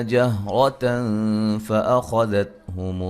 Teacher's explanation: جہرتن را کو موٹا ادا کریں گے، نون تنوین کا یہاں باریک اخفا ہے